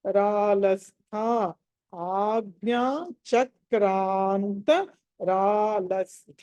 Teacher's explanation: త థ అక్కడ మహాప్రాణం ఉంది, థ కాబట్టి ఒత్తి పలకాలి